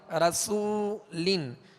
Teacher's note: سین کو سیٹی کی آواز میں پڑھیں گے مگر باریک. رسولن, سین پر پیش بھی ہے لہذا ہونٹوں کو کامل گول کر کے ادا کریں گے.